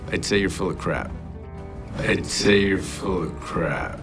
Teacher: he reduces the word of to a simple uh sound and also to how it connects to the previous word full resulting in one connected sound